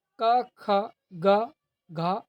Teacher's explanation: कंठ वर्ण। जिन वर्णों का उच्चारण कंठ से होता है